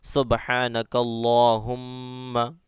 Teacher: اور میم میں تشدید آ رہا ہے تو میم میں گنہ کرنا ہے